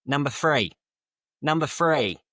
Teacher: cochnney speech often drops the h sound and replaces th with an f or a v · In Cockney, they just use an F.